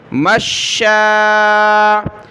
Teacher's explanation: شین کو سخت کیا اور مد کی وجہ سے کھینچا